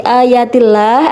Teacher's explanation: adalah lafadz Allah dibaca tarqiq karena di Kenapa karena disitu lafadz Allah dicuri harokat kasroh selama